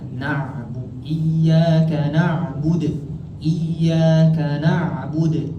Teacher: Kalau huruf Ain ni dia adalah bersifat bainiyah. Bainiyah ni apa? Dia mengalir. Na'bud, bukan na'bud.